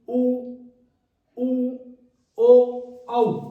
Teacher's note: तो इसमें पहला वृत्तामुखी, पहला देखिए ध्यान से, वृत्तामुखी स्वर यानी होठ गोल हो जाते हैं। जब हवा निकलती है मुंह से तो होठ की आकृति गोलाई वाली हो जाती है।